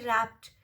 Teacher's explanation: P is a plosive sound, and when we put ed after plosive sounds, it sounds as t sound, not d sound.